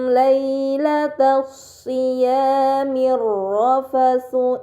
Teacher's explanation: terdapat mim sukun bertemu dengan huruf lam ini dinamakan izhar syafawi maka mim sukun dibaca secara jelas